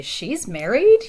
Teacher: just making your voice go up at the end to indicate that you're asking something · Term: intonation